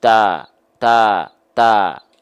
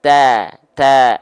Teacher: pasti yang lebih tipis adalah ketika kita lafalkan dengan keadaan sambil senyum senyumnya senyum natural saja Senyumnya jangan senyum berlebihan biasa aja Ta